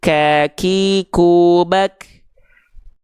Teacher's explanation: Kaf itu keluar nafas sedikit